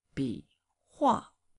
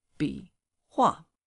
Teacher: The third tone followed by the fourth, so it's only falling down.